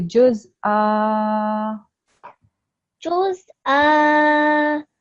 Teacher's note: Okay, that was correct, but because we're going to read it as fatha with alif instead of tanween of fatha, we're going to prolong the sound for 2 seconds. So it's going to be juz'a.